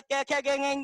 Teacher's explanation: कंठ से कै खे गेंग की लाइन उच्चारित होती है